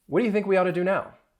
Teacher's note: really what happens is that that T sound, you're not really going to hear it.